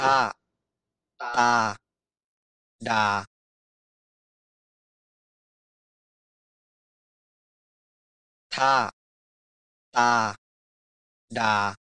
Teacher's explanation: So Thai distinguishes three different kinds of alveolar stop sounds. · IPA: tʰ t d